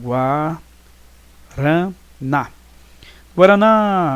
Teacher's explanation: a última sílaba é mais forte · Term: sílaba tônica